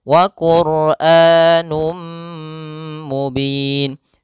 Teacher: P hafal Num kembali ada dhamatain bertemu mim yaitu idgam bhunah masukkan tanwinnya kepada mim dan ditahan